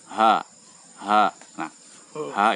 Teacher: kalau kita mengucapkan ha ha ha itu keluar dari tenggorokan yang paling dalam